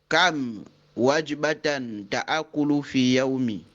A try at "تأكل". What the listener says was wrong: Ce n'est pas ta'akulu, c'est ta'kulu. Kam wajbatan ta'kulu fil yawmi. Kam wajbatan ta'kulu fil yawmi.